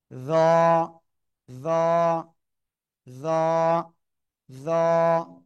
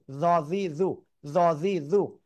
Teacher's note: জিহ্বার আগা উপরে দুই দাঁতের আগায় লাগাবেন, লাগিয়ে উচ্চারণ করতে হবে মোটা আওয়াজে।